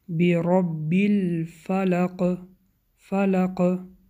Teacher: حرف قاف در وقت ایستادن کسرش به ساکن مبدل می گردد که حرف قلقله می باشد